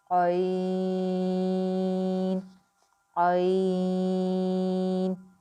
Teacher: عین کی ادائیگی کا آپ نے خاص خیال رکھنا ہے کہ اس میں جھٹکے کی آواز جو ہے وہ بالکل بھی نہ آئے